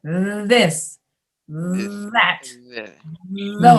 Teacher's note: So then if you add voice, you go, Mm, mm, It almost makes the tongue itch because a little bit of air passes over your tongue and it just makes it itch a little bit or vibrate.